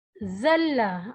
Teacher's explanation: یہ باریک حروف ہے اور دانتوں کے درمیان سے یہ حرف ادا ہوتا ہے